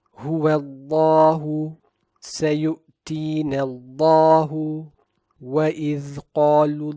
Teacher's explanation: in these two cases there is out the man before it so we recite the word Allah in all of these examples as heavy